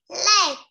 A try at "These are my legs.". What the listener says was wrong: Legs, yes, you have to say the S. If you don't say the S, it's wrong, okay?